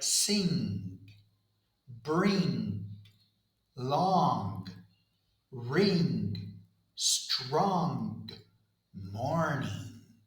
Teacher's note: The sound is voiced. So the throat vibrates the whole time. · we do not need to release the tongue. Instead, the air flows out through the nose. I lower the soft pallet the volume so air can escape through the nasal cavity. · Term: NG sound